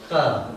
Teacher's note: When the tongue touches the deepest part of the mouth, the sound that comes out is ka. То есть, когда язык касается самой глубокой части рта, ротовой полости, происходит звук К.